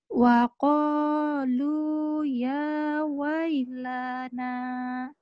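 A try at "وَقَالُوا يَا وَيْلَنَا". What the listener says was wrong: Lanya pendek. Sekali lagi.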